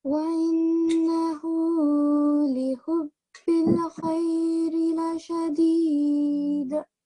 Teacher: And here again, continue with this one here, with this verse, and make sure that you don't prolong the la, and you have a qalqala on the dal because you're pausing at the end of the verse here.